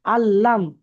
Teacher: লামের উপরে তাজদি আছে এটাকে দুবার পড়তে হবে